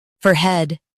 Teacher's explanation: In US, stress fore and keep head soft. In UK, fore is emphasized.